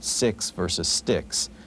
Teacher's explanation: the X sound is really a KS sound